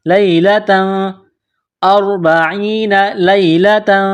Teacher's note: اربعین لیلۃ، لام کو یا کے ساتھ ملانا ہے، تا کے اوپر دو زبر تنوین ہے، تنوین کے بعد سا ہے، حروف اخفا ہے تو تنوین میں غنہ کرنا ہے